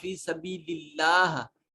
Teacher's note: اس میں جلالت اللہ کو مفخم یعنی موٹا اور پر کر کے نہیں پڑھیں گے، کیونکہ اب اس کے پیچھے پچھلے کلمہ میں زیر آ رہی ہے. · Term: باریک